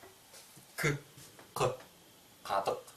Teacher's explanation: в словах где гласный язык гласные буквы заднего ряда а поэтому смыкание происходит глубоко сзади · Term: задняя взрывная